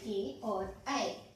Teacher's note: इन स्वरों के उच्चारण के लिए कंठ और तालु दोनों का ही प्रयोग होता है, ये दोनों कंठ तालव्य ध्वनियां हैं।